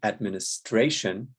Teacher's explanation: Administration is stressed on the fourth syllable.